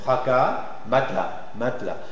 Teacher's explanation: le A final s'articule comme le A précédent par assimilation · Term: A antérieur